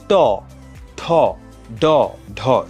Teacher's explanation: ট বর্গীয় ধ্বনি এগুলো উচ্চারণ করার সময় যেটা হয় সেটা হচ্ছে জিওভার যে আগাটা থাকে সেটা কিঞ্চিত উল্টে যায় উল্টে উপরের মাড়ি যেই গোড়ার শক্ত অংশটা আছে সেটাকে হচ্ছে স্পর্শ করে যেমন ট ঠ ড ঢিওভাটা উল্টে যাচ্ছে উল্টে উপরের মাড়ির গোড়ার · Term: মূর্ধন্য ধ্বনি